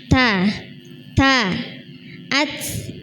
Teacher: Ta itu ada ee nafas yang keluar